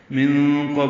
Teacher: نون ساکن کے بعد قاف آنے کی وجہ سے اخفا ہوگا، نون کی آواز چھپائیں گے، قاف پر پڑھیں گے، با ساکن پہ قلقلہ ہوگا، لام کو معروف طریقے سے ادا کریں گے.